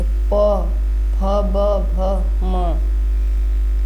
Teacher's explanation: ओष्ठ दोनों ओठों से